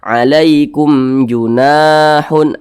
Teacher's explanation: Bukan huruf ba, bukan huruf mim di depannya sini, maka berarti ini hukumnya adalah izhar syafawi. Karena dia izhar maka dibaca jelas, tidak berdengung. Jadi dibaca pendek saja.